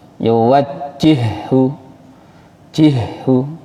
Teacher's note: Jadi haknya double, tidak terhenti, tidak putus nafasnya. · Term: idgham mutamathilain